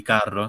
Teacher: realizzare questa vibrazione con il punto della lingua toccando la cresta alveolare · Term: doppia r